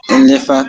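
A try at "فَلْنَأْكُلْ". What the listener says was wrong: Non, le fa vient avant le lam. Fa.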